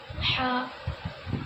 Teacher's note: حا کا مخرج واسطے حلق، خا، خا، خا کا مخرج منہ بھر کے پڑھو۔